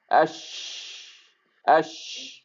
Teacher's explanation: جیم، شین اور یا، یہ تمام کیا ہیں؟ وسط اللسان جب اوپر کے تالو سے ٹکرائے گی تو ایک ہی مخرج ہے